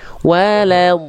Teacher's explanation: Karena ada sifat istitolahnya itu memanjang makhraj itu, akhirnya agak telat keluar vokal o-nya.